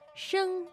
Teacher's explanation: the word for sound is Shing now just in case you're asking that is two first tones